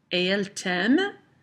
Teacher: my intonation rises with the question